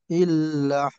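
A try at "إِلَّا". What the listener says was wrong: আর একটু লম্বা করে, যাতে একালিফ পূর্ণ হয়।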